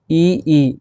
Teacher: ई कहाँ से निकल रहे हैं, तालू से निकल रहे हैं